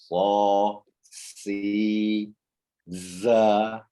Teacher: Kalau huruf sin itu dia berasal dari ujung lidah yang hampir bertemu dengan gigi seri bawah gitu. Bukan gigi seri atas, gigi seri bawah. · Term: huruf sofir